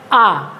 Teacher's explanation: देखिए विवृत स्वर में पूरा मुंह खुलता है। अधिक मुंह खुलता है आ।